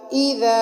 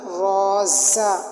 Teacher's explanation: ذال کو نرمی سے پڑھا جاتا ہے، اور جو زا ہوتی ہے نا روزا، اس زا کو سختی سے پڑھا جاتا ہے